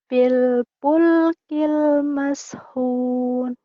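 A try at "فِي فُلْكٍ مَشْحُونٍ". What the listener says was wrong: Di sini gigi atas taruh di bibir bawah. Jangan langsung dilepas. Biar keluar nafasnya dulu. Jadi fa-nya itu ada keluar nafasnya ya, biar nggak tidak ke P. Tadi kedengaran saya pil pulkil. Ya, pil fanta, fanta gitu ya.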